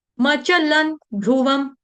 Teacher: ल के ऊपर जो अनुस्वार है उसका उच्चारण होगा अनुनासिक हलंत न की तरह